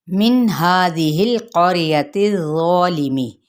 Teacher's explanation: نون پہ اظہار ہے کیونکہ آگے حروف حلقی میں سے ہے، ہا پہ کھڑا زبر ہے جس کو ایک الف کے برابر کھینچیں گے، پھر اگلا جو ہا ہے یعنی زال کے بعد زال کے نیچے زیر ہے اس کو نہیں لمبا کرنا لیکن نرمی سے ادا کرنا ہے، اور اسی طرح لام کو نہیں ہلائیں گے۔